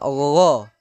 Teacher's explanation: gha yaitu ghain di pangkal di tenggorokan atas. Ya, tenggorokan atas yang mendekati lidah.